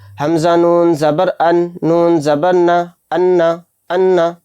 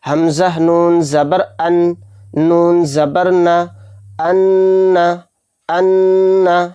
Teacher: حمزہ نون زبر ان، نون زبر نہ، ان، ان، یعنی ایک دم ہم نے پڑھ دیا، ناک میں آواز کو نہیں روکا تو یہ غنہ نہیں ہوا، تو یہ غلط ہے، اس طرح سے نہیں پڑھنا چاہیے، اس سے بچنا چاہیے۔